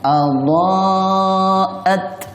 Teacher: ta ini tidak memiliki sifat sofir, desisan, bodan. Jadi cara pengucapannya adha'at. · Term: huruf ta mati